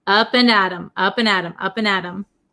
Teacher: it becomes a flap T so it sounds like a D sound